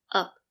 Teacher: Use the schwa sound. Up. It's a relaxed sound. It's a lazy sound. Up. The position of the voice is low.